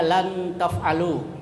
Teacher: Kemudian yang ketiga lan taf'alu, ya, nun mati ketemu ta, itu disebut ikhfa. Ya, cara membacanya nun mati samar antara izhar dan idgham